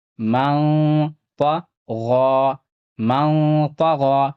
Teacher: نون ساکن کے بعد طا ہے، طا حروف اخفا میں سے ہے، اخفا ہوگا